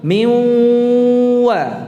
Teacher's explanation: Gunnah itu berasal dari nun, ya, yang masuk ke huruf waw dengan tidak sempurna. Jadi miu, ya, sambil mencucu sempurnakan suara dengungnya, perjelas suara dengungnya.